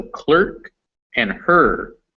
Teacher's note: it's sometimes a schwa if it's before an r in a word with a single syllable